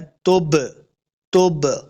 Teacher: تو ان میں سے با یہاں پہ ساکن ہے تو ہم نے اس کو خوب واضح کرنا ہے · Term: حروف قلقلہ